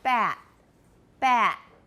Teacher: the glottal stop also is used with the final t in words like cat and bat they can be glottalized replaced by the glottal stop or the